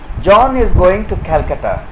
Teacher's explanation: if this statement is spoken in falling tone it will be a statement